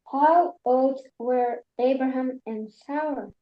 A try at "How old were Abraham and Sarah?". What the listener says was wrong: Very good. Beautiful pronunciation.